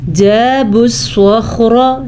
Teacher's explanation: صاد بھی پر پڑھنا ہے اور خا بھی پر پڑھنا ہے کیونکہ یہ حروف مستعلیہ میں سے ہیں. حروف مستعلیہ ہر صورت میں موٹے کر کے پڑھے جاتے ہیں.